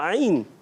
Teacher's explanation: عین حلق کے درمیان والے حصے سے